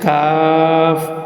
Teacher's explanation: চার নাম্বার ছিল জিহ্বার গোড়া তার বরাবর কিন্তু পাঁচ নাম্বার হলো জিহ্বার গোড়া থেকে একটু আগে বাড়িয়া তার বরাবর উপরে তালুর সঙ্গে লাগাইয়া